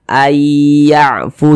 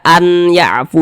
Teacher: bunyi Nun sukunnya ini dimasukkan ke huruf ya kita baca Ay yafu jangan dibaca an ya'fu jangan tapi langsung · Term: idgham bi gunnah